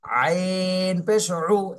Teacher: এটা গলার মধ্যে ঢুকবে একদম মাঝখান থেকে উ